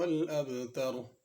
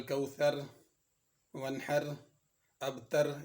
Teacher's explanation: اس میں 3 آیات ہیں اور تینوں کے آخر میں را ہے، اور تینوں را کو پر پڑھا جائے گا، باریک نہیں پڑھا جائے گا۔ کل کوثر، ونحر، ابتر یہ ایسے پڑھنا درست نہیں ہوگا، ان کو موٹا پڑھا جائے گا۔